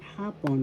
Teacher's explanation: First syllable ha, second syllable pon, The first syllable has the accent.